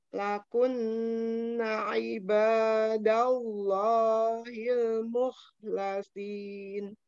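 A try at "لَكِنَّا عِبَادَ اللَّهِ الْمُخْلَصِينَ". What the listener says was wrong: Ya, ini Ainnya bagus, tapi nanya belum panjang. Umi udah loncat aja.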